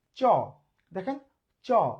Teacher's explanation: আলতো করে, নরম করে, কোমল করে, মোলায়েম করে, স্পর্শ করে চলে আসছে, কোনো জোরে ঘর্ষণ লাগছে না, তাই এটা অঘোষ ধ্বনি